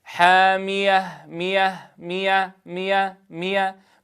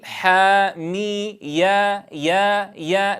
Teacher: فلا نقول حامية مية مية مية مية فتكون كسرة الميم قد أدمج فيها صوت الياء المحققة، بل لا بد من الاعتماد على مخرج الياء الذي هو في وسط اللسان مع وسط الحنك الأعلى. فنقول حامي يا يا يا، لا بد أن يسمع هذا الصوت عند نطق الكلمة. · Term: الياء المفتوحة